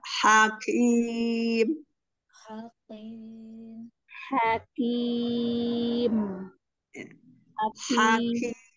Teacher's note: Kasih hamas sedikit di kafnya.